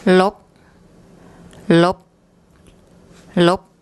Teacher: the correct unreleased pronunciation of final consonants in Thai